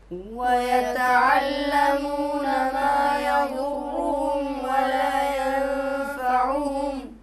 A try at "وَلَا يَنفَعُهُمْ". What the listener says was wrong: یہ کے اوپر کیا ہے؟ زبر ہے یا پیش ہے؟ کیا ہے؟ زبر ہے، تو پڑھو،